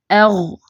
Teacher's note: جیسے صاد ضاد طا ظا، ان کی آواز جو ہے یہ بھری ہوئی ہوتی ہے، جیسے ایف ایپ ایو ایو، تو یہ ایغ، اس میں صرف زبان کی جڑ اوپر اٹھے گی لیکن باقی زبان جو ہے وہ نیچے رہے گی